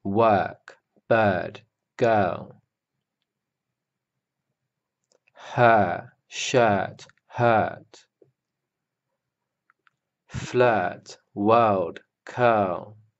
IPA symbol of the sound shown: ɜ: